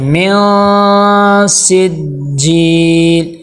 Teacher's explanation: اخفاء میں سے آ گیا، تو یہاں پہ ہم کریں گے نون کی آواز کو ناک میں چھپائیں گے، ناک میں لے کے جائیں گے، غنہ کریں گے